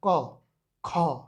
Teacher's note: जब ख बोलते हैं तो ज्यादा वायु निकलता है मुंह से। तो जब ज्यादा वायु निकलेगा वो हो जाएगा महाप्राण, कम वायु निकल रहा है अल्प प्राण।